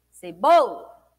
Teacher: O bo a gente falou com maior intensidade. O bo é a penúltima sílaba. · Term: sílaba mais forte